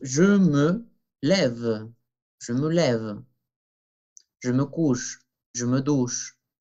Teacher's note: la pequeña vocal E, que no se pronuncia al final